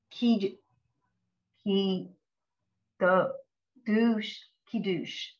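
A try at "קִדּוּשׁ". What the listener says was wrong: Right, kiddush. Good, right.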